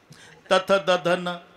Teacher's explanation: जेव्हा संबंध जिभेचा दाताशी ते दंते आहे · आतून धक्का मारते जीभ दाताला, पण दात पाहिजे.